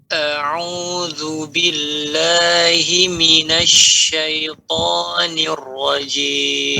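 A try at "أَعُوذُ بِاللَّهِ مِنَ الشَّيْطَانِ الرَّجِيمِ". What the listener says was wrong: Nah, ini sempurna ya.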